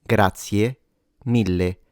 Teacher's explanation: the e at the end, you could say it as an open e if you want, or you can close it into a e, grazie mille, which would be a bit more correct, but both are widely used in Italy.